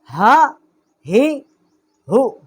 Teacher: اقصائے حلق، جو حلق کا سینے کی طرف والا حصہ ہے، وہاں سے اس کا مخرج ہے۔ حمزہ زبر آ، یہ ہا ہے، ہا زبر ہا، ہا زیر ہی، ہا پیش ہو، ہا ہی ہو۔ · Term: حروف حلقی